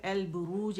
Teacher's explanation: یہاں لام پڑھا جانے والا لام ہے, ظاہر ہو رہا ہے, اس کا اظہار ہو رہا ہے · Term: لام قمریہ